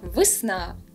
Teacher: Ненаголошений «е» дуже наближається до «и»